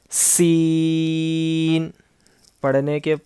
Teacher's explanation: اس کے بعد ہے سین، سختی سے پڑھنا ہے، سین، پڑھتے وقت اس میں سیٹی کی آواز آنا ہے